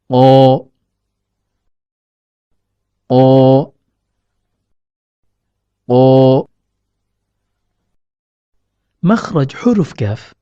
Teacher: huruf qaf keluar dari pertemuan antara pangkal lidah dengan langit-langit lunak